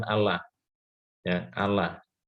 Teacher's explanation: lamnya itu dibaca tarkik, dibaca tipis ya.